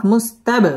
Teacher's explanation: বা কলকলার হরফ ধাক্কা দিয়ে পড়তে হবে। শিরা র পুর হবে এবং তায়ের মধ্যে ওয়াকফ করতে হবে।